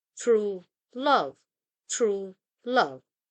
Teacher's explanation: And then we have the spondee, two stressed syllables, such as true love, true love. Two successive stressed or strong or emphasized syllables.